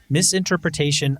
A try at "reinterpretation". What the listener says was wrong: Reinterpretation, not miss. He says read. You said miss. He says reinterpretation.